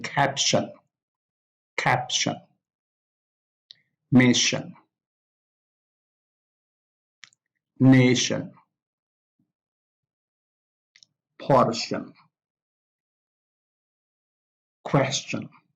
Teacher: the stress is on the first syllable, not on the -tion